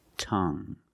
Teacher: You have only the nasal sound. There's no g. It's just the sound Tongue.